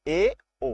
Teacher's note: अर्धसंवृत होते हैं जिन स्वरों के उच्चारण में मुख द्वार संवृत की तुलना में अधिक खुलता है, यानी कि संवृत तो कम, सबसे कम खुलता है, लेकिन उससे कम, उससे अधिक थोड़ा सा खुलता है, उसको क्या कहते हैं?